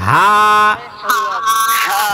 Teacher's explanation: এই হাটা সবসময় মোটা করে উচ্চারণ করতে হয়।